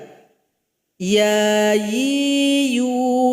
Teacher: Huruf ya keluar dari tengah lidah. Kemudian tempelkan ke langit-langit kita.